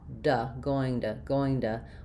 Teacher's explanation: the word to often sounds more like a flap and a schwa, going to, when it comes after a vowel or after something like an NG, which is voiced and continuous.